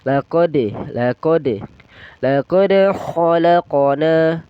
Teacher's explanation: laqad itu qalqala sugro. Jadi kita harus memantulkan sedikit ya.